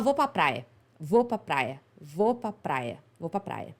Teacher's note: A gente tende a produzir a palavra só até a sílaba tônica, né? A sílaba forte da palavra. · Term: português mineiro